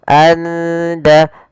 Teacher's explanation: Karena di sini kita baca samar di antara izhar dan idgham. Maka suara nunnya samarkan ke da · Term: ikhfa hakiki